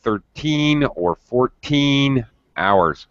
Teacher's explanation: you really need to stress and emphasize teen at the end of the word